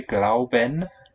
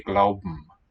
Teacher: b or p with a syllabic m